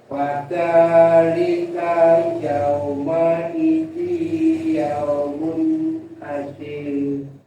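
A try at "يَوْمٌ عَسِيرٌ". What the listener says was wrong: Panjangin lagi, ada ya-nya. Panjangin asir.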